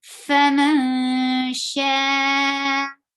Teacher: keep your sound in your nose and hide the sound of noon. Go towards the makhraj of sheen. · Faman sha. Sha is 4 haraka long because you find hamza after mud letter. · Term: ikhfa